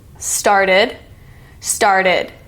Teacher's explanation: This is the ID sound because the root word ends in T. It's also the new syllable.